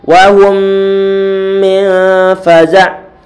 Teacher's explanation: Mim sukun bertemu dengan mim, bacaan idgham mimi ataupun idgham mutamatsilain atau mislain. Ditahan suara dengungan di sini.